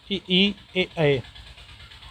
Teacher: अग्र स्वर कौन से हैं? वे स्वर जिनके उच्चारण जीभ का अग्रभाग सक्रिय रहता है उन्हें क्या बोलते हैं? अग्र स्वर कहलाते हैं।